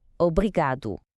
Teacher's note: The emphasis is on that second to last syllable, obrigado.